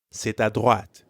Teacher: notice the liaison between c'est and à.